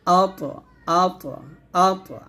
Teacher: মাত আর এখানে বলতে হবে হামজা ত জবর আ ত কারণ ত কলকলা হরফ যেহেতু সাকিন আসছে অবশ্যই কলকলা করতে হবে মোটা করে